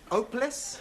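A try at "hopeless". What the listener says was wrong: you keep dropping your aspirat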